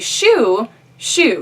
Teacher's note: your tongue kind of lays kind of flat, and it's a palatal sound